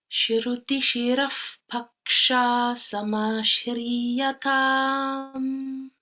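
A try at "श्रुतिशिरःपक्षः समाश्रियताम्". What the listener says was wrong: No, this one is pakshas. So don't put any length there.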